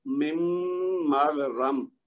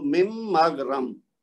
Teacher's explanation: جب ہم من کو نون کی آواز گرائیں گے نا تو وہ ایک طرح سے میم ساکن بن جائے گا